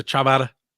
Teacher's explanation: it's just the d but it sounds like the rolling r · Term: d trick